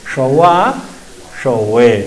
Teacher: Ahí está y usted entonces lo importante que no es chowa no es la che del español ni tampoco es sha como la sh del inglés sino que está la lengua recogida